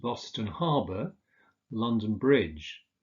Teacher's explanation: with places the second word tends to be stressed